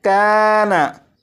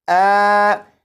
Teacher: काफ और नून के दरमियान जो आवाज़ है आ, ये अलिफ मखरज से अदा हो रहा है।